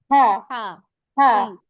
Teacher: গলার কাছ থেকে একটা ফ্যাসফিসে আওয়াজ আসবে